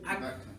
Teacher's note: It doesn't come out because the back of the tongue goes up and blocks the sound.